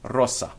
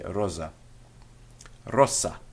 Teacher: the S before a vowel in Latin remains as an S